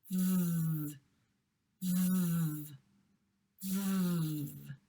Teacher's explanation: V, v, v. This sound is the voiced version of the F sound.